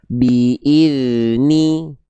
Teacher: dalal gak boleh memantul kan enggak punya sifat qalqalah. Maka yang tepat adalah yang kedua, tidak terputus, tidak memantul.